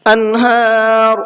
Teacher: نون کی آواز کو بالکل صاف صاف پڑھنا ہے، غنہ اخفا کچھ بھی نہیں کرنا ہے۔ انہار، یہاں پر بھی نون ساکن کے بعد میں ہا ہے، تو وہی سیم قاعدہ ہے اظہار کا.